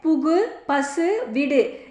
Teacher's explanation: தன்னுடைய ஓசை குறையாமல் ஒரு மாத்திரை அளவில் முழுமையாகவே ஒலிக்கும். அவ்வாறு முழுமையாக ஒலிப்பதையே முற்றிய லுகரம் என்கிறோம். · தனிக்குறில் எழுத்தை அடுத்து வரும் வல்லின உகரங்கள் ஒரு மாத்திரை அளவுக்கு முழுமையாக ஒலிக்கும்